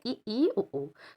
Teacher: समृद्ध स्वर में मुख विवर लगभग बंद सा होता है, उसे उच्च स्वर कहते हैं।